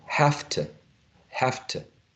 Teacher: We noticed a reduction of the long U becoming a schwa · V turns into a F. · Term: regressive assimilation